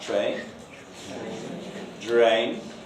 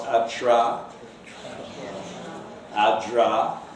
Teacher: There's another allophone, and that's the post-alveolar affricates that you find in words like train and drained.